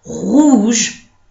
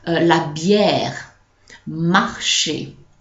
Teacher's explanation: at the beginning of a word like rouge, it's going to be more accentuated than when it's inside a word.